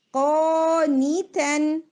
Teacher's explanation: قاف پلس الف دونوں ہیوی ہوں گے